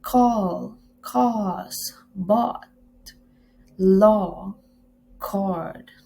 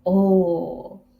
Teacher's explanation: A midback vowel sound articulated in the back of the vocal track with the tongue partly opened and the lips in a rounded position